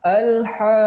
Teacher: Huruf ha yang sebetulnya dia adalah mad asli, kemudian diikuti oleh huruf qaf yang berharokat ada tanda tasydidnya, maka huruf ha-nya dipanjangkan lebih dari 2 harokat